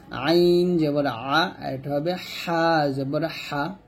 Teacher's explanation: আইনটা হলকের মাঝখান থেকে এবং হাটাও হলকের মাঝখান থেকে উচ্চারণ করতে হবে